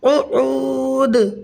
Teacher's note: واو ساکن سے پہلے عین کے اوپر پیش ہے تو یہاں پر واو مدہ ہوگا, اور حالت وقف میں جب دال ساکن ہوگی تو یہاں قلقلہ کبرا ہوگا